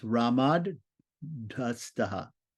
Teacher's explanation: the dental T is going to turn into a dental D. It's going to soften it. And then the H itself is going to turn into a DH.